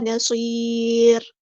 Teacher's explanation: را کو ہم ساکن کر دیں گے وقف کرتے ہوئے، ایک سے نہیں پڑھیں گے بلکہ ساکن کر دیں گے، اور یہاں پر مد عارض بھی ہوگی.